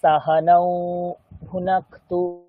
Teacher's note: নৌটা দীর্ঘ, কারণ ওকার রয়েছে তাই, বাকি সমস্ত হ্রস্ব।